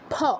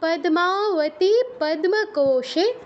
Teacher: আমাদের দাঁত ব্যবহার করলে চলবে না দুই ঠোঁট ব্যবহার করতে হবে